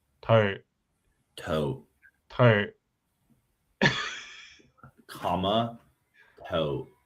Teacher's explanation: Where where I start my tote diphthong is definitely not the same as my schwa in comma tote comma toe.